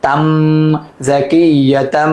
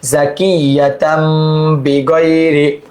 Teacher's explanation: মাম, বা জবর বা, খজের কি, বাখিলাম জবরলা, বাখিলা, মাম বাখিলা, মাম বাখিলা, জা জবর জা, কাফিয়া যে কি, জাকিয়া জবর ইয়া, জাকিয়া, তা দুই জবর তাম, এই যে জাকিয়া, তান হওয়ার কথা ছিল, তানবিনের পর বা আসছে ইকলাব হরফ, এই জন্য মিম দ্বারা পরিবর্তন করতে হবে